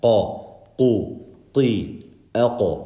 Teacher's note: The qaf is the roof of your mouth where it's soft in the back.